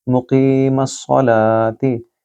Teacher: قوف کو اپنی زبان کے پچھلے حصے سے ادا کیجیے اور کی کو لمبا کریں گے کیونکہ یا مد ہے۔